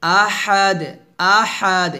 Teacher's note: আহাদ এর ডালটা কলকল হয়ে যাবে আহাদ আহাদ এভাবে আমরা অনেকে এখানে আহাদ বলি আহাদ বলবেন না